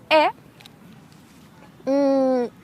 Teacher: It's a bit like in French. You got this open mouth. It's similar to ye sound, but it's just open and you don't have this ye pre-sound